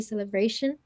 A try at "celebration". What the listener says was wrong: Celebration. I heard a v in there, celebration, and this v will be repeated, I think. So again, get that but right. I know many people have problems with individual sounds and it can be a real pain, but and v.